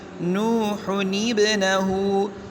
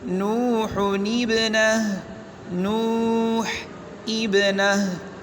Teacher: تنوین کے بعد اگر حمزہ وصلی ہو اور اس کے بعد آنے والا حرف ساکن ہو تو تنوین کی نون کو زیر دیتے ہیں، کیونکہ حمزہ وصل درمیان میں گر جاتا ہے۔ جیسے نوح ابنہ، اصل میں ہے نوح ابنہ، تو اس کو یعنی نون تنوین کو زیر دیں گے، کسرہ دیں گے، نوح ابنہ۔ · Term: نون قطنی